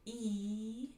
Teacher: you've got a high front vowel like e. The tip of your tongue is reaching high in the front of your mouth. So the back of your tongue is low and the tip of your tongue is high.